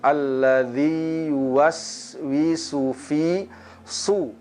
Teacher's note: pada huruf sid ada sifat as-safir, adanya suara desisan